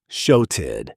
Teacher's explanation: notice that flap T, softening the double consonant sound. It's not a hard TED, it's soft and quick.